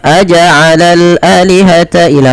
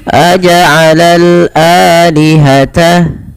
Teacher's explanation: Dipanjangkan 2 harokat karena ia mad badal adanya hamzah bertemu dengan alif.